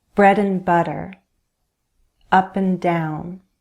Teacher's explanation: we usually reduce the vowel sound. It sounds like /ən/.